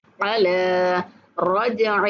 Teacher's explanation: جیم پر قلقلہ کرنا ہے اور ہا کو کھینچ کے پڑھنا ہے